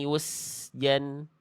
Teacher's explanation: sin sukun nggak punya sifat kolkolah, maka jangan dibaca yusejan